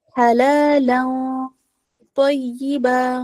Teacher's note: ٹھیک ہے۔ تو جو ہے نا وہ ہیوی لیٹر ہے، تو جب ہم یہاں اخفا کریں گے حلالن پڑھیں گے تو ہم اخفا کو بھی ہیوی کر دیں گے کیونکہ ہمارا نیکسٹ جو ہے وہ لیٹر ہیوی ہے